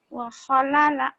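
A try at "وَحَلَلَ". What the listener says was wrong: Bukan kho tapi ha. Wahalala.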